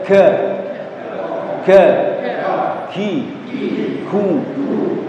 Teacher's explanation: Huruf kaf tempat keluarnya lidah paling belakang ya. Ditemukan dengan langit-langit berdaging dan bertulang pas di atasnya ya.